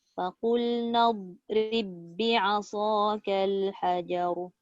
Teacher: Ba jangan qalqalah. Ba tu sebab apa tak ada qalqalah? Sebab dia jumpa huruf ba juga.